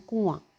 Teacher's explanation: इसमें क्या करना है कि हमने नून को छुपा के पढ़ना है। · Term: इख्फ़ा